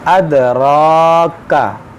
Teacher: اد را کا، دیکھیے را پر کھڑا زبر ہے تو اس کو موٹا بھی کریں گے، اور کھڑا زبر جہاں بھی کھڑا زبر ہو اس کو ہم ایک الف کے برابر کھینچ کر پڑھیں گے